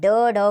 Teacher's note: इनके उच्चारण में जीभ पीछे की ओर मुड़कर तालु से टकराती है और आवाज सामने गिरती है। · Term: उत्तिप्त व्यंजन